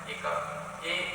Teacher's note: ए, आई इसका उच्चारण स्थान है कंठ और तालु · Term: कंठ तालु